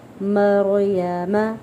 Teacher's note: را مجزوم ساکن ہے، ساکن سے پہلے زبر ہے تو یہاں پہ را کو پر پڑھا جائے گا